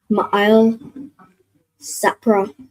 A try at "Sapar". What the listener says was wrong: So not Sapra, but that last part. So Sa and then the Pa and Ra are joined. So what sound would that make with the Pa and the Ra joined? Sapar. So Ma'il Sapar.